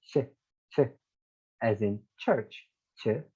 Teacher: they start with t and they go to sh, and t and sh collides together and they make the ch sound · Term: affricates